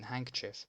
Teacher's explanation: nobody pronounces the ⟨d⟩ in 'handkerchief'